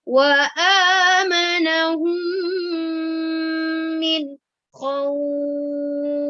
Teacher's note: Kemudian pada kata min khauf, nun dan kha adalah bacaan izhar ya. Izhar artinya jelas, berarti kalau jelas tidak boleh didengungkan ya.